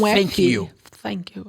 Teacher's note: No Cockney, o TH, eles falam... É o F. Quase um F, né?